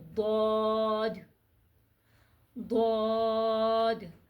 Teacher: آواز اوپر کی طرف جائے گی، آواز کو ہونٹوں کو گول بالکل بھی نہیں کرنا، اور یہ سب سے موٹا حرف ہے اور اس کو موٹا کر کے ہی پڑھا جائے گا.